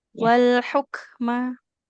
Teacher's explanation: di kata wal hukma huruf kafnya harus ada aliran nafasnya